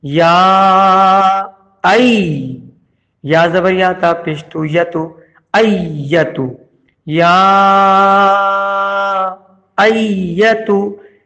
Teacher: اس کے بعد یا کھڑا زبر یا، اس کھڑے زبر پہ چھوٹا والا مد آیا ہوا ہے تو دو الف کے برابر کھینچیں گے یا کو، اور پھر حمزہ یا زبر ای پڑھا جائے گا، حمزہ زبر آ کو تشدید والے یا سے ملائیں گے، ای آواز آئے گی